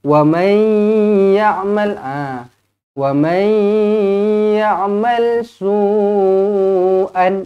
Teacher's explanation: nun kosong bertemu dengan ya idgham ma'al ghunnah dengan dua harakat